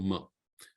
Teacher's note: ma is not just through your lip but it has also the nose resonating the resonation resonance through the nose and that's the nasal touches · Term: anuswara sound